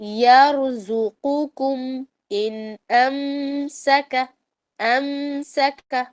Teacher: یرزقکم میں جو زا ہے وہ وائبریشن کے ساتھ پڑھنا ہے، لیکن قو کو حلق سے اور دوسرا جو کم ہے نا اس کو باریک کرنا ہے